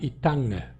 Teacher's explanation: sem nasalizar a palavra inteira, mas a última consonante é nasalizada